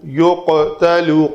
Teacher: قاف کا جو مخرج ہے وہ ہے لوتھڑا جو ہے جسے کوا کہتے ہیں ہم، وہ بالمقابل تالو کے ساتھ لگے تو وہ قاف ادا ہوتا ہے، اور قلقلہ پر ہونا چاہیے اس کا، کیونکہ قاف اور طا دو حروف ہیں کتب و جد میں جو پر ہیں، اور ان کا قلقلہ بھی پر ہوگا۔